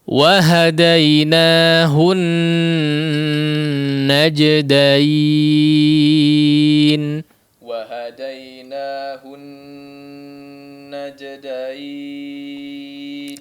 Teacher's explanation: nun yang bertasydid, maka gunnahnya dipanjangkan dengan gunnah yang paling sempurna